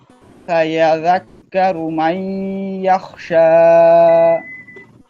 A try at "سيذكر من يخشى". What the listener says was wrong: ওখানে দুইটা জাল তো, একটা উচ্চারণ আসছে, জালটা ডবল হবে, সায়াজ।